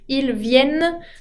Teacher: Ils viennent se termina con la doble N que se acentúa, pero la ENT final no se pronuncia.